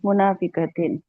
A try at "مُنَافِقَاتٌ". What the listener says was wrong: یہ تو مفرد بن گیا منافقتن. تن. لمبا کر کے. منافقاتن منافقاتن.